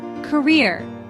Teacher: Two syllable word. Stress is on second syllable.